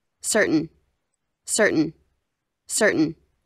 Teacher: o americano não gosta de falar o t